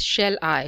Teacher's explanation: shell is not stressed and I is stressed